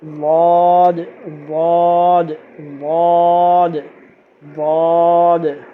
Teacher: دال پہ قلقلہ، دال کی ڈبل آواز آئے گی